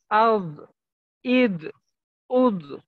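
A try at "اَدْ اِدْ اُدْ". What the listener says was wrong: হ্যাঁ একটু কলকলার মতো মনে হইলো যেন।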